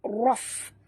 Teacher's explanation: Tekan ataupun ketap gigi atas ke bibir bawah. Raf. Keluar angin ya. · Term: Hamasnya